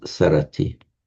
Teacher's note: The verb to, conjugating it now as a verb, so he, she, or it remembers is smarati, which in Pali just becomes sarati. So Pali can't begin a word with a sm, so the M drops, becomes sarati.